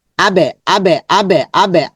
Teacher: এখানে আবে লম্বা হবে জবরের পরে খালি মাদের হরফ আবেহিম আবে সরিহিম তাহলে এই শব্দের মধ্যে শুধু এটা লম্বা হবে